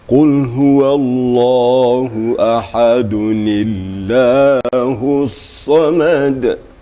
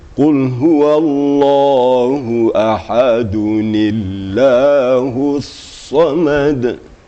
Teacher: lafaz Allah ini lafaz jalalah menjadi tarqiq karena nun itu baris kasrah.